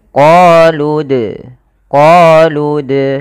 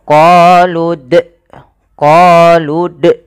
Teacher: dia memantulkan tanpa ada huruf hamzahnya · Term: Qalqalah